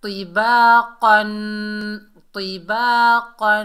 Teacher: الف خالی سے پہلے زبر آ رہا ہے، یہ الف مدہ ہے، ایک الف کی مقدار کھینچ کر پڑھیں گے